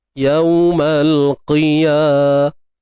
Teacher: Kemudian matikan ta ni dengan bunyi ha. Ta marbutah ni kita matikan dengan bunyi ha